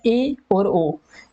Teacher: अर्ध संवृत का अर्थ है आधा बंद। जिन स्वरों के उच्चारण में मुख आधा बंद रहता है उसे अर्ध संवृत स्वर कहते हैं